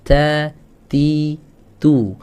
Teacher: Ta, ti, tu itu ada hamsnya, tapi sangat sedikit, dan itu sudah cukup ya. Nggak perlu kita nampakkan perjelas tu, huruf ta ada hamsnya gitu.